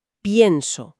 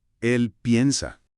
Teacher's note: La e se abre en i e. Es un mecanismo maravilloso de descompresión para darle más peso dramático a la sílaba.